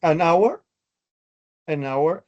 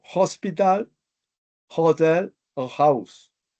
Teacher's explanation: es un sonido aspirado, sonido consonante suave, o sea, cuando la H suena como una J